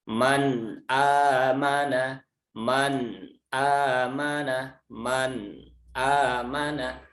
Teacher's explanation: lidahnya tidak terlepas, nempel tekan, sehingga dia tetap satu huruf. Ya, jadi seperti itu, seolah-olah dia ada dua huruf. · ujung lidahnya itu nempel dulu ke langit-langit, ya kan di tempat makhrajnya huruf nun, kemudian baru ditekan di langit-langitnya itu, baru membaca huruf berikutnya, baik itu hamzah, ha, ain, ha, ghain atau kha. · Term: izhar